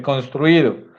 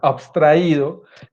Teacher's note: O sea, ambas son vocales, ambas son palabras graves. Ambas el acento le recae en la misma sílaba, que es en la I, y ambas son hiatos.